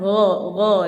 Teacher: Gha itu tempat hurufnya di ujung tenggorokan. Jadi ujung tenggorokan gha di sini ya, ujung tenggorokannya.